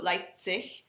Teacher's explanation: The Z is pronounced with a TS sort of sound.